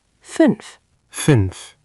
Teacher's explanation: Remember the U sound, like pursing your lips for U, but saying E.